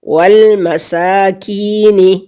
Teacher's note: یا ساکن سے پہلے لفظ کے نیچے زیر ہے یعنی کسرہ ہے تو یہ یا مدہ ہے اور اس کو ایک حرکت کے برابر ہم کھینچیں گے